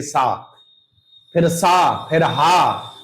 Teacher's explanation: इन व्यंजनों का उच्चारण करते समय मुख से हवा रगड़ खाकर बाहर निकलती है। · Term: संघर्षी व्यंजन